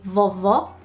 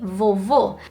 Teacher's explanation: So you've got an open sound and a closed sound.